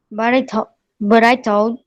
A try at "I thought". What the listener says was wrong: Lembra que tem um TH, tá? Lembra, o TH é com a língua atrás dos dentes.